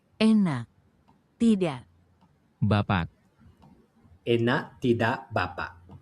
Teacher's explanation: Now, the final K is swallowed. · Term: glottal catch